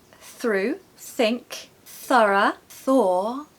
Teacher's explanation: the reason we call it unvoiced is because it doesn't need the vocal chords to make the sound okay there's a lot of breath coming through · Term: unvoiced th sound